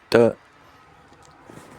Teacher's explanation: It is pronounced by the tongue tip or blade. The tongue tip or blade touches the alveolar ridge to block airflow, then releases the air while the vocal cords vibrate. · The sound d. It is a voiced alveolar plosive. It is pronounced by the tongue tip or blade.